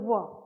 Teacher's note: मेरा ऊपर वाला दांत है वो नीचे वाले ओष्ठ में थोड़ा सा टच होता है। व ना तो वह पूरा पूरा दांत से उच्चारण हुआ और ना तो पूरा पूरा ओष्ठ से उच्चारण हुआ। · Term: अर्ध स्वर